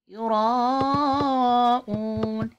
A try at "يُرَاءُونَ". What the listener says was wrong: stretch the را with ألف مادة يراءون Also, the alif hamza has a waw madda, so it's say oon. Especially the last vowel, you have to stretch longer than the other vowels.